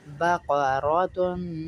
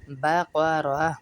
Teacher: تا کو ہاں میں بدل دیتے ہیں وقف میں